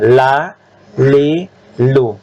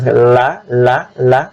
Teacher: dia di tepi lidah pada posisi gusi atas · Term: ujung tepi lidah